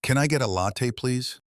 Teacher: Now, at a natural speed, linking can I get a together.